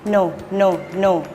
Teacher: ให้ห่อริมฝีปากแล้วใช้ปลายลิ้นแตะบริเวณฐานฟันบนพร้อมกับทำเสียงขึ้นจมูก